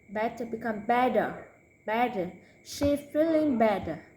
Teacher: Do not hear any T sound. Only D, D, with a voice.